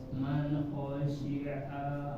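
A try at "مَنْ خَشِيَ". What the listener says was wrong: man bukan a itu khasya. Man khasya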